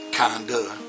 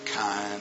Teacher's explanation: If a word ends with D, you don't go like kinda, right? You go kind, and you stop. Okay? So there's no harsh endings to those words.